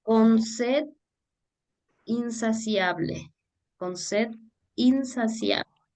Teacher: separando en dos vocales que deberían estar unidas en una sola sílaba de esta forma las vocales se pronuncian en hiato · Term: diéresis